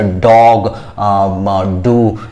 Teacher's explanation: ड के उच्चारण में हमारा जीभ दोनों दांत के बीच में नहीं आता है, बल्कि ऊपर वाले दांत से पीछे वाले हिस्से यानी रूफ ऑफ द माउथ जिसको कह सकते हैं, पैलेट के आसपास टच करता है हमारा जीभ ड के उच्चारण।